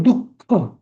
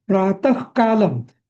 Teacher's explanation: जेव्हा क आणि ख त्याच्या आधीचा जो विसर्ग असतो ना, तेव्हा त्या विसर्गाचा ख होतो. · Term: जिव्हामूलीय